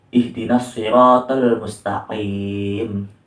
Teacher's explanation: Jadi qaf itu disertai dengan nafas